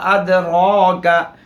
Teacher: रा पर खड़ा ज़बर है, मोटा पढ़ा जाएगा और 1 अलिफ के बराबर खींचा जाएगा।